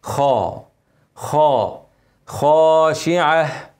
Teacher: الخاء زي قلنا الغين كده لازم نفخم